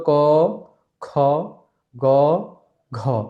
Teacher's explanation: তাহলে কিন্তু খ তে বেশি বাতাস বের হচ্ছে ঘ তে বেশি বাতাস বের হচ্ছে তাহলে আমাদেরকে বুঝতে হবে এগুলো হচ্ছে মহাপ্রাণ তো পিটা হচ্ছে মহাপ্রাণ